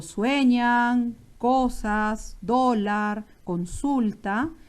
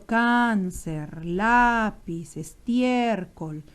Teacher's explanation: cualquier consonante diferente de ns vocal por ejemplo cáncer lápiz estiércol la intensidad está en la penúltima sílaba